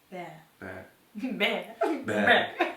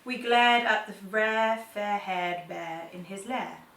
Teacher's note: Americans peel their tongues all the way back to say R, but we don't. So our tongues are lazy.